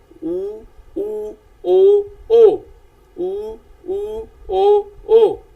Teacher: ਗੋਲਾਈ ਤੋਂ ਭਾਵ ਹੈ ਕਿ ਜਦੋਂ ਅਸੀਂ ਇਹਨਾਂ ਦਾ ਉਚਾਰਨ ਕਰਦੇ ਹਾਂ ਸਵਰਾਂ ਦਾ ਤਾਂ ਸਾਡੇ ਜਿਹੜੇ ਬੁੱਲ ਨੇ ਉਹਨਾਂ ਦੀ ਸਥਿਤੀ ਕਿੱਦਾਂ ਦੀ ਹੋ ਜਾਂਦੀ ਹੈ, ਉਹ ਬੁੱਲਾਂ ਦਾ ਆਕਾਰ ਕਿੱਦਾਂ ਦਾ ਹੋ ਜਾਂਦਾ ਹੈ। ਤਾਂ ਗੋਲਾਈਦਾਰ ਤੋਂ ਭਾਵ ਹੈ ਬੁੱਲ ਗੋਲ ਹੋ ਜਾਂਦੇ ਨੇ ਤੇ ਮੂੰਹ ਵਿੱਚੋਂ ਹਵਾ ਬਾਹਰ ਨਿਕਲਦੀ ਹੈ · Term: ਗੋਲਾਈਦਾਰ ਸਵਰ